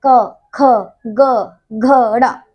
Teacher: ठीक है, तो ये जो पूरा वर्ग आता है ना, क वर्ग जो है वो पूरा कंठ से बोला जाता है।